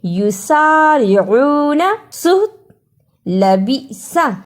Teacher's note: سین کی آواز سیٹی والی ہے